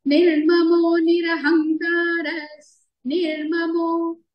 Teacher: నిర్మమో, నీరా రెండు హ్రస్వాక్షరాలే, దీర్ఘం చేయకూడదు. మో, మో దీర్ఘంగానే పలకాలండి.